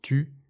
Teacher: D'abord, le son U comme dans tu, il n'existe pas en anglais. La bouche doit être en position ou mais avec le son I.